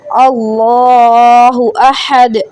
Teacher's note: اللہ احد، اس کو موٹا کریں گے. اللہ احد، احد دال پہ قلقلہ کریں گے